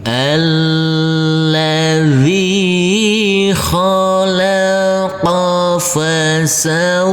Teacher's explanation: Huruf wawu kita tekan dan kita tahan saja dengan 2 harokat. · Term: huruf wawu yang bertasydid